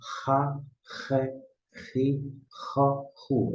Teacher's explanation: É mais raspado na garganta. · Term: RET